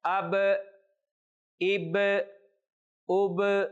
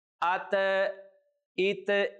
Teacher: با کو ہم نے ظاہر کر کے پڑھا ہے، اب، اب، اب، لیکن تا کو ہم نے ظاہر نہیں کیا، ات، ات، ایسے نہیں۔ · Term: قلقلہ